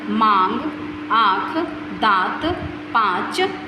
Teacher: अनुनासिक चिन्ह का उच्चारण करते समय नाक और मुख दोनों का प्रयोग किया जाता है।